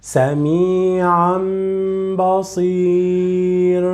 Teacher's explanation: we need to convert the sound of the Tanween, of the Noon to the Mim.